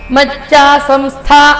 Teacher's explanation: ಇಲ್ಲಿ ಮಚ್ಚ ಸಂಸ್ಥ ಮಹಾಪ್ರಾಣ ಒತ್ತುಕೊಡಬೇಕು